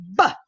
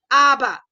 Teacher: Dalam bahasa Inggeris pun dia akan guna stops ya. Bilabial stop, voice bilabial stop atau plosive.